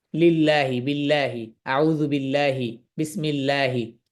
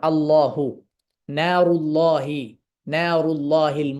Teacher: লাম সব অবস্থায় স্বাভাবিক থাকবে শুধু আল্লাহ শব্দে গেলে মোটা হবে একক মানে আল্লাহ শব্দ আল্লাহ শব্দে যখন এই লাম যাবে লাম